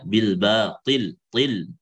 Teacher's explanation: til itu dia harus lebih tebal dan lebih jelas ketebalannya dan tafkhimnya dibandingkan qaf kan kalau dia kasrah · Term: itbaq kasroh